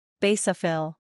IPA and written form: ˈbeɪ sə fɪl (Basophil)